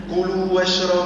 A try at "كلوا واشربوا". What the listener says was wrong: ما تزربش. كلوا واشربوا ريح المدود.